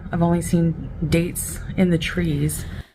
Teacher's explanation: And she's using vocal fry in this video.